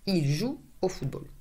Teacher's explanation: you cannot hear the final S.